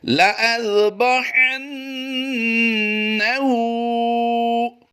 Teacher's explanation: इस वक्त आप अपनी स्क्रीन पर जो लफ्ज़ देख रहे हैं याद रहे यहाँ पर हमने लाम अलिफ ज़बर ला में अलिफ पर गोल दायरा देखा है, तो यहाँ पर हम इस लाम अलिफ ज़बर ला को लंबा नहीं करेंगे बल्कि लाम ज़बर ला की अदायगी करेंगे